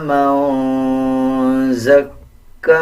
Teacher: نون کے اوپر جزم ہے، اخفا کیا جائے گا یعنی غنہ کیا جائے گا اور آواز ناک سے نکالی جائے گی